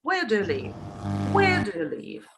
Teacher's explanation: you can use a higher pitch, of course, at the beginning.